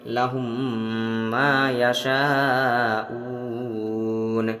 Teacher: میم کو میم سے ملا کر غنہ کے ساتھ پڑھیں گے